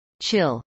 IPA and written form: tʃˈɪl (chill)